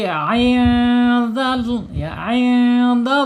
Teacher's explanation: Ain makhrajnya ada di tengah-tengah tenggorokan ya, ketika keluar angin ain ini ada di tengah-tengah tenggorokan ya.